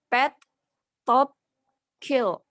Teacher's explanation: For example, pet, top, kill are also aspirated because they are pronounced with an accompanying forceful expulsion of air